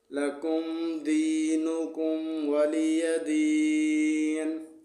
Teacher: واو زبر و لام زیر لی ولی زبر یا ولی دال یا زیر دی ولی دی نون زیر نی ولی دینی. نون کو وقف میں ساکن پڑھیں گے.